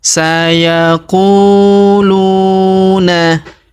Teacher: huruf lu kita panjangkan dua harakat karena wau sukun di depannya